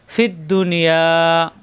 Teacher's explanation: ইয়া আলিফ জবর ইয়া, মাদের হরফ এক আলিফ টান, জিব্বান মাঝখানে উপরে তালুতে লাগবে। ফিদ দুনিয়া, এক আলিফ টান হবে।